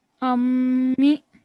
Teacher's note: Meme mashaddad, therefore 2-second nasal sound. The meme carries a kasra, mi.